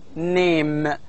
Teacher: it begins with a nasal sound as in name and also ends with so it has two nasal sounds · the air stream is allowed to flow out through the nose